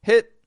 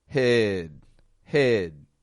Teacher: the vowel stretches out more it's the same vowel sound the second is lengthened · stop consonant however what I am doing is lengthening the vowel when there's a voiced stop consonant you get that lengthening the vowel